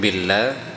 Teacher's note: billah tipis karena diawali dengan huruf kasrah bi, sehingga lafzul jalalah Allah itu menjadi tipis